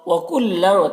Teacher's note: تنوین میں اخفا ہو رہا، تنوین کی آواز کو ناک میں چھپا کر پڑھیں گے۔